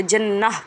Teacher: نون مشدد ہوگا تو وہاں پہ غنہ کریں گے، یعنی ناک میں آواز لے جا کر پڑھنے کو غنہ کہا جاتا ہے، اس لیے یہاں پہ ہم غنہ کریں گے۔ · گول تا وقف میں ہا بن جاتا ہے، اس لیے یہاں پہ جنہ پڑھیں گے، یہ ہا بن جائے گا۔